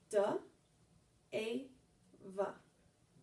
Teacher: We have a voice tongue tapper, a smiling vowel, and a voice lip chiller.